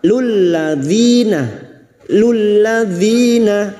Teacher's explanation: kasrah bertemu ya sukun 2 harakat mad tabi'i